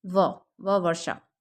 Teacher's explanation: ये य र ल व यह सघोष में है और अल्पप्राण भी है · ऊपर के दांत और निचला होठ